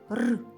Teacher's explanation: перший звук р це приголосний вимовляємо швидко відривчасто